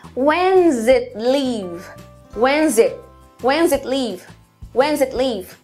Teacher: na fala contínua também é comum tirar esse does it e acabar falando só when it leave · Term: connected Speech